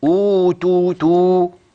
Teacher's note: نطقت بالضمه يعني الشفتين مضمومتين ضم جيد